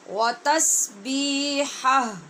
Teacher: ہا کی آواز زبر کے ساتھ پڑھنی ہے اور آگے ہا کو ساکن کرنا ہے